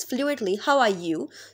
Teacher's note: So are will not be pronounced as a strong form. It will be pronounced as a weak form. So r will be represented by this schwa sound.